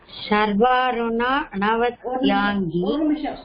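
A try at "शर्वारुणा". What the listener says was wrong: ஒரு நிமிஷம் கொஞ்சம் மொல்லா சொல்லுங்க இது ஷர்வா இல்ல இது சக்கும் ஷக்கும் வித்தியாசம் இருக்கு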